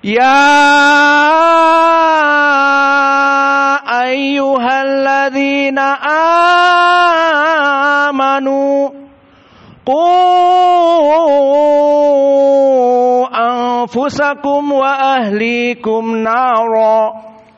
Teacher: Dan adapun dari qiraah yang lain seperti Wars an Nafi', maka di sini dibaca dengan al-isba panjang 6 dari mad jaiz munfasil dan juga dari mad badal amanu